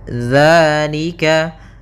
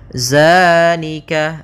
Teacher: bukan dia bukan huruf dza bukan dengan bacaan Zai di sini tidak dibaca dengan Zai akan tetapi dengan dalal